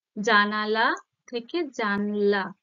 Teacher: মাঝখানে একটা স্বরধ্বনি মিসিং, তাই তো? অর্থাৎ লোপ পেয়েছে। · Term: মধ্য স্বরলোপ